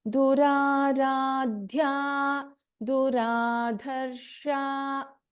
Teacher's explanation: Just ensure you put little more stress, little more prana effort into this dha mahaprana.